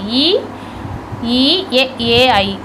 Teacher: அடுத்தது ஈ ஈ ஏ ஏ ஐ ஆகிய 5 எழுத்தும் வாயை திறத்தலோடு மேல்வாய்ப்பல்லை நா விளிம்பு தொடுவதால் தோன்றுகின்றன